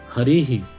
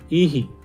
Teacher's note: यहाँ पर जो विसर्ग है यह विसर्ग ई पर आश्रित है और ई का उच्चारण स्थान होता है कौन सा, तालु